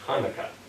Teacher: kept the guttural ch sound